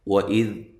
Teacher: زال کو نرم ادا کرنا ہے، زال کو ہلانا نہیں ہے · واو کو ادا کرتے ہوئے ہونٹوں کو گول کرنا ہے